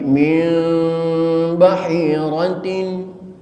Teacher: membaca iqlab itu tidak menekankan kepada huruf ba 100% sehingga timbul mim suara mim 100% mim